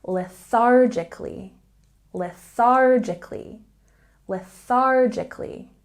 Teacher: Oh, you're going to sound so smart if you say lethargically. There's a stress on the second syllable, and we have the TH sound. Get silly with me. Put your tongue between your teeth.